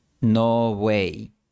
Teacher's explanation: El sonido b es una aproximante bilabial. Los labios se acercan el uno al otro, pero no se cierran por completo. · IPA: ['no 'βwej]